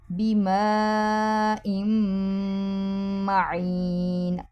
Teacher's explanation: ام پہ ادغام یعنی غنہ کریں گے، آواز ناک میں سے آواز نکالیں گے